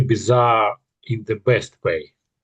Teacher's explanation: when you come to the word bizarre, it might get a little bit more emphasis because it's going to be the exciting word in the sentence. So you might give it a bit more pizzazz when you say it, a little bit something you say it in a slightly more exciting way.